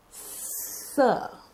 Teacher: up sir is a voiceless velar fricative it's a light sound it is made when the tip of the tongue comes near the teeth ridge and it's a fricative or a continuous sound